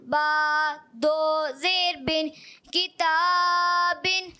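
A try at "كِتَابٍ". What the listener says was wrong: اچھا کتابن. پیارے بچے ایک الف سے زیادہ نہیں کھینچنا ہوتا. کتابن.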